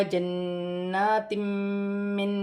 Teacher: دو زیر کی تنوین کے بعد میم مشدد آ رہی ہے، یہاں پر ادغام مال غنہ کا قاعدہ ہے، دو زیر کی تنوین میں غنہ بھی کیا جائے گا، ملا کر بھی پڑھا جائے گا